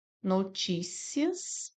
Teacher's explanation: Aqui nós temos uma paroxítona. Paroxítona. Por quê? Porque a sílaba tônica é o ti. E aqui é uma paroxítona terminada em ditongo crescente.